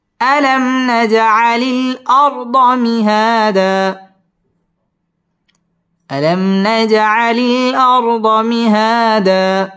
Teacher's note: নাজ জিম কলকলার হরফ ধাক্কা দিয়ে পড়তে হবে।